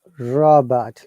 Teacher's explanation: First R must be pronounced and second R must not be pronounced because there is a vowel sound.